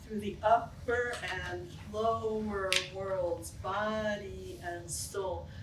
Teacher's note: clearly the up is stronger than the through, right? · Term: stronger emphasis